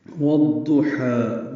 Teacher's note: واو کو ہونٹوں کی نا تمام گلائی سے ادا کرتے ہوئے ضاد سے ملا دیں گے، الف لام نہیں پڑھیں گے. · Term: ادغام شمسی